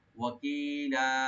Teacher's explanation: আলাইহিম ওয়াকিলা, ওয়া ওপেন রাখবেন, কাফটাকে একটু পাতলা করে পড়তে হবে, আর লামে একালিফ টেনে আমরা ছেড়ে দেবো, মধ্যে আওয়াজ হয়ে যাবে।